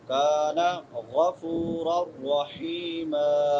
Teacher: غین کہاں سے ادا ہوتا ہے؟ ادنا حلق سے، حلق کے شروع والے حصے سے